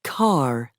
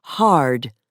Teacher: Most Americans also pronounce the R at the end of words, for example, car, and before a consonant, for example, hard, as the early settlers did.